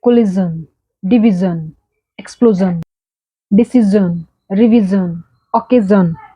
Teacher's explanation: You can found that there is a z sound and the o is having short u sound. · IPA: /ʒən/